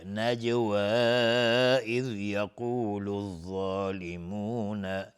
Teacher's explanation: جیم اینجا قلقله میخواد چون ساکنه